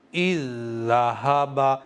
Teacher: میں نے پہلی والی زال کو سائلنٹ کر دیا ہے، نہیں پڑھا ہے